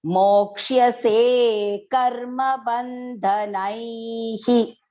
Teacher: So before the visarga, the pronunciation is nai. So the visarga pronunciation will be short hi.